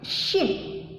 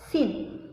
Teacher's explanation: Kalau shin itu keluar dari tengah-tengah lidah, shin. Nah, pengucapannya shin dari tengah-tengah lidah. Kalau sin, nah pengucapannya itu dari ujung lidah dan ujung gigi seri bawah. Sin, ujung lidah dan ujung gigi seri bawah.